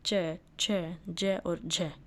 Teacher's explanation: जिन व्यंजनों की उच्चारण में स्पर्श का समय अपेक्षाकृत अधिक होता है और उच्चारण के बाद वाला भाग संघर्षी हो जाता है, वे स्पर्श संघर्षी कहलाते हैं, जैसे च, छ, ज और झ।